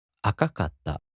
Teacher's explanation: In the flat-type, the accent falls on the fourth to the last mora.